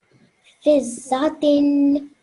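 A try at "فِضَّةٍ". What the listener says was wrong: Excellent. Well done. You did that just right.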